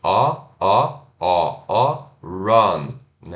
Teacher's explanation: o v de ponta cabeça né que é o ó que a gente Relaxa os lábios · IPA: /ʌ/